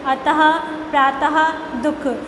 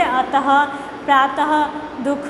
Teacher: जब आप विसर्ग का उच्चारण करते हैं तो आपको थोड़ी सी ह की ध्वनि सुनाई देती है